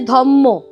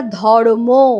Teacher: পরের ময়ের প্রভাবে আগের রটা ম হয়ে গেল